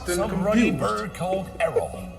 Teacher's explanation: One unique feature that you will hear with this accent is that rhotic R.